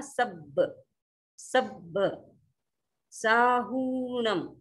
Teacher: सब, स पर थोड़ा सा दबाव आएगा, सब, सब साहूणम, हु थोड़ा सा लंबा जाएगा क्योंकि बड़ी मात्रा है